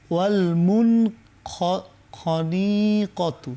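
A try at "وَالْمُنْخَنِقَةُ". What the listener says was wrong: না, নিতে টান নেই। ওয়াল মুন খনি, একটু আমরা ভেঙে ভেঙে পড়ি। ওয়াল মুন খ, ওয়াল মুন খ নি, ওয়াল মুন খনি ক, ওয়াল মুন খনি ক তু, ওয়াল মুন খনি ক তু। এখানে মুন গুন্না হবে না, কারণ বাম দিকে কি আসছে? খ আসছে।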